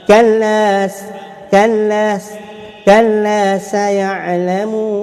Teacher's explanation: Saya ada hamas ataupun safir, huruf sin berbaris fathah. Kena baca ada desiran macam ular lah.